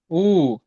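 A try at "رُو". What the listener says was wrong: ஊ அல்ல. ரூ. ரூ.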